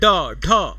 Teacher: आपकी जीवा ऊपर जाके मूर्धा पे तुरंत फटाक से नीचे गिर जाती है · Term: ताड़न जात व्यंजन